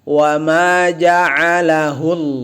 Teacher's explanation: harusnya dia a dari tengah tenggorokan. Karena orang laki-laki jakunnya naik ketika mengucapkan a.